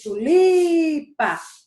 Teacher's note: Eu passei mais tempo no li. Se eu passei mais tempo no li, é uma paroxítona, porque a sílaba tônica mais forte é no li, que é a penúltima sílaba.